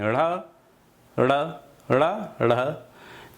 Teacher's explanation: इनका जब उच्चारण आप करते हैं ड़, ढ़, तो जीभ को ऊपर उठा के फेंकते हैं, ड़, ड़, ड़, ढ़, तो इसीलिए इन्हें उच्छिप्त द्विगुण व्यंजन भी कहते हैं।